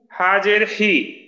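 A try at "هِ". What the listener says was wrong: এই যে হি, একটু আওয়াজটায় চাপ হয়ে যায়, হি না হি।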